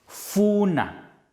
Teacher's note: a voiceless labiodental fricative